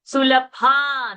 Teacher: Sulabha, that Bha is a Mahaprana.